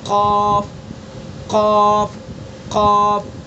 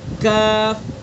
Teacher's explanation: قاف کا مخرج زبان کی جڑ اور اس کے مقابل اوپر کا تالو. زبان کی جڑ یہ پیچھے کا حصہ، یہ جڑ ہے، اس جڑ کو بالکل اس کے مقابل اوپر کے تالو پر لگا دیں گے اور ادا کریں گے قاف قاف قاف.